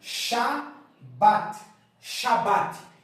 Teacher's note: aqui eu tenho o xin Você já conhece que representa o SH no português aqui eu tenho a vogal longa a